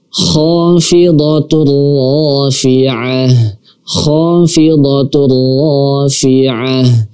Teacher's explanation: tanwin bertemu dengan huruf ra juga, maka di sini tidak kita dengungkan. Langsung kita masukkan dan langsung juga kita baca huruf ra-nya. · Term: idgham bila gunnah